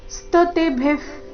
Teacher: ಶಬ್ದದಲ್ಲಿ ಮೂರು ಅಕ್ಷರಗಳು ರಸ್ವ ವ ಮತ್ತೆ ತಿ ಮೇಲೆ ಆಘಾತ ಸ್ತುವಂತಿತ್ವಸ್ತುತಿ ಸ್ತುತಿಭಿಫ ಅಲ್ಪಪ್ರಾಣ ನಂತರ ಭಿ ಮಹಾಪ್ರಾಣ ಬಂದಿದೆ